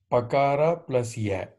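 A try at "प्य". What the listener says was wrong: Pakara plus ya, yes.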